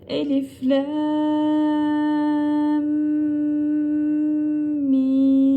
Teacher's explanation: da şu şekildedir Şimdi elifi normal okuyoruz Elif şeklinde daha sonra lamı Lemi 4 elif miktarı çekiyoruz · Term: Meddi Lazım